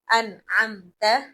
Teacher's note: اس میم کو اظہار کر کے، ظاہر کر کے عام طریقے سے پڑھیں گے، نہ گنگناہٹ کی آواز ہوگی نہ چھپانے کی آواز ہوگی